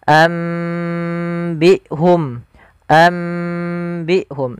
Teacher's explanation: Sebenarnya pada lafal iqlab ini sendiri ada dua pendapat di dalam membaca iqlab. Yang pertama dengan itbaq yaitu dengan merapatkan bibir secara utuh. Yang kedua masih meninggalkan furujah.